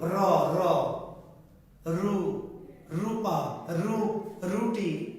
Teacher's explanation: র ধ্বনিটা উচ্চারণ করতে গেলে আপনাকে জিহ্বার মাথাটা কি করতে হয়, একটু কাঁপাতে হয়, কাঁপানো, তাহলে উচ্চারণটা সুন্দর হয়। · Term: কম্পনজাত বর্ণ